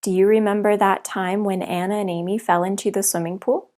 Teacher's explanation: they don't pause between words they pronounce whole phrases and even sentences as one continuous sound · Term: linking